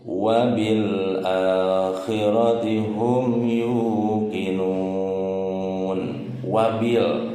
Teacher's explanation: ada alif lam ketemu huruf hamzah, hukum bacanya alif lam qomariyah ya, alif lam qomariyah jelas, jadi lamnya diizharkan ya.